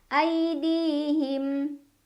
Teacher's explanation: Di mad tabi'i karena ada ya sukun sebelumnya kasroh. Cara bacanya dipanjangkan 2 harokat.